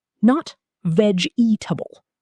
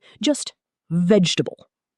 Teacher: 3 syllables, stress on first.